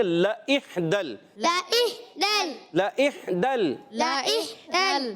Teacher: لام کی زبر کو کھینچنا نہیں ہے، حمزہ کو ہا سے ملائیں گے، لئح، ہا کی ادائیگی الگ کے درمیان والے حصے سے، دال کو لام سے ملائیں گے، لام کو ہلائیں گے نہیں، ٹھیک ہے نا؟